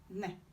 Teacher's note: You have ne. Alveolar nasal as in nat.